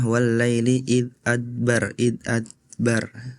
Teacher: wallaili id adbar qalqalanya tidak terdengar jelas